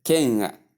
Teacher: the word king has no G attached to it in pronunciation. It only has ng sound at the ending, and that is what you see here as N with a kind of curve at the last leg.